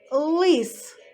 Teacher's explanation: звук л звучить твердо та чітко